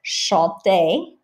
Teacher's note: Although an infinitive, a verb, you will not pronounce the R. So if I say chanter, the infinitive, ending in ER, then you wouldn't pronounce that R.